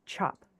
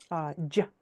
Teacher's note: It's a breathy sound. There's a lot more breath in an affricate than the other sounds.